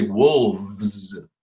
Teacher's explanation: people will take that V and make it into an F